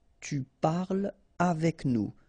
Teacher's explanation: So no liaison here between parle and avec